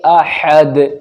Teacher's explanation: اب یہاں پر دال ساکن ہو جائے گا جب ہم یہاں پر رک جائیں گے یعنی ٹھہر جائیں گے، اسٹاپ کریں گے۔